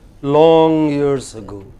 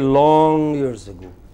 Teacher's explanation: the long is prominent in that group